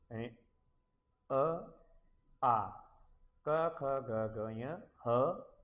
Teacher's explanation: ये सारे कंठ से उच्चारित होते हैं। इन्हें कंठ्य कहते हैं।